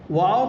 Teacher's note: واو کا مخرج ہے دونوں ہونٹوں کی گولائی کا حصہ، دونوں ہونٹوں کو ہم فولڈ کریں گے تو یہ واو ہمارا ادا ہو جائے گا.